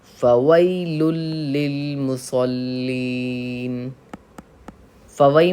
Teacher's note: تختی نمبر 5 حروف لین یا لین، یا ساکن سے پہلے زبر ہو تو یا لین ہوگا، آواز معروف ہو نرمی سے جلد ادا کی جائے. لل، یہاں پہ لام پہ تشدید ہے اس لیے ہم سختی کریں گے.